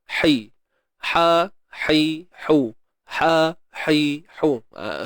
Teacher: Ha pedas ni di bahagian tengah kerongkong. Makhrajnya tengah kerongkong.